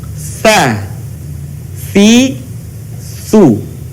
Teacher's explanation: Berikutnya perhatikan bagaimana melafalkan huruf ta, yaitu dengan menyentuhkan ujung lidah kita dengan dinding dua gigi seri bagian atas, kemudian diucapkan dengan mengalirkan suara dan nafas kita dengan lembut